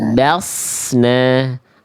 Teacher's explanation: Tebal. kasih tebal biar enggak jadi sin ya, Bun.